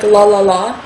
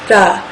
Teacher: It has a slight rolling L sound in the beginning, so it's not la, like la la la, not like that at all.